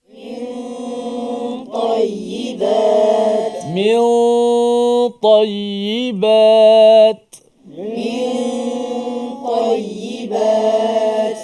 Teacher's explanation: Kerana pangkal lidah kita terangkat huruf ta tebal. Ta, huruf ta kan huruf yang isti'la kan, menyebabkan pangkal lidah kita terangkat dan huruf ta bersifat dengan kuat.